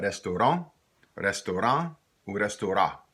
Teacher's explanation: An can either sound like that, an, or sometimes in Louisiana French, it might go up to the sound on, or sometimes that nasalized sound won't be there at all. It becomes just a.